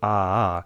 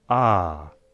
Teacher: instead of pronouncing two a-a, this becomes one long /aː/